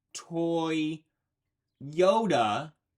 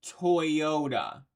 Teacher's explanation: it is just your voice gliding between those two vowels · the two vowels next to each other kind of making it sound like there is a y sound in there but there isn't it is just your voice gliding between those